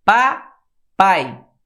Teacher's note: Agora olha como o A é mais forte do que o I. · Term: ditongo